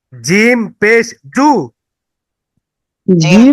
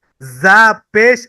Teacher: জিমটা হলো জিহ্বার মাঝখানটা উপরের তালু আর যা হচ্ছে সিনের মত করে সিন যা একই জায়গা থেকে অর্থাৎ জিহবার আগাটা নিচের দাঁতের পেট এবং আগার সাথে লাগিয়ে